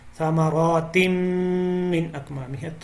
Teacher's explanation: ثمرات میں را کو موٹا پڑھنا ہے. تم یہاں پہ غنہ ہو رہا ہے, ایک الف کے برابر آپ نے آواز کو ناک میں لے کے جانا ہے.